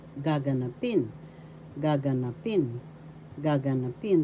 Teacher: Fourth syllable has the accent